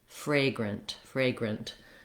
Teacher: we barely say a vowel in this second syllable it's short it's reduced it's unstressed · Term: schwa